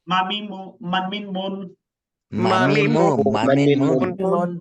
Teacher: জিহবাও লাগবে না দাঁতও লাগবে নাও লাগবে না জাস্ট দুই ঠোঁট দুই ঠোঁটে যে শুকনো স্থান আছে এই স্থানকে একত্র করে উচ্চারণ করবেন